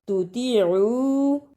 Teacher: طا کی جگہ پہ تا کی آواز نہیں آنی چاہیے